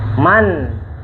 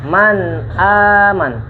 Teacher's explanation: Ini tentang nun sukunnya. Nun sukunnya itu dibaca dengan jelas, menyentuh ke makhrajnya. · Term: izhar